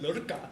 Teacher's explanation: I had learned how to control aspiration. I had learned how to say lurka with a retroflex flap.